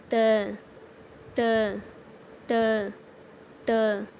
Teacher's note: மேல் பற்களின் வேர்களை நாக்கின் நுனியால் தொடணும்